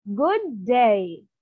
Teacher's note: Rising falling intonation it is normal voice then it will rise and then it will go down